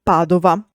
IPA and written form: ˈpadova (Padova)